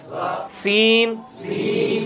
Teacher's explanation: سین میں سی ٹی کی آواز آتی ہے جس طرح ایس ہے انگلش کے اندر